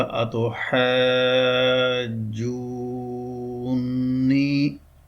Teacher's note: تو اب اس کو جب اس میں داخل کریں گے مدغم فی میں، پہلے نون کو دوسرے نون میں داخل کریں گے، متحرک نون میں داخل کریں گے تو شکل آ جائے گی یہ، اور اس پر تشدید آ جائے گی